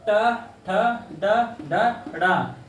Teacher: ट ठ ड ढ ढ़, ये मूर्धा से बोले जाते हैं